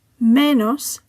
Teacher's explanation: Menos ends with an S, therefore the stress falls on the penultimate syllable.